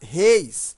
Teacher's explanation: se eu colocasse reis, veja que a pronúncia é fechada